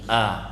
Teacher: keluarnya dari pangkal tenggorokan sini, a, jangan ke atas. Nanti kalau ke atas dia masuk ke huruf ain, karena setelahnya adalah huruf ain. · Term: huruf hamzah